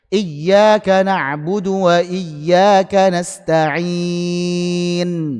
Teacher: Disukunkan. Sukun dulu, baru monyong. Monyongnya tanpa suara dhammah. Jadi cuma isyarat saja. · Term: ismam